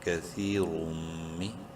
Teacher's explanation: تنوین کے بعد میم ہے ادغام مع الغنہ، غنہ کریں گے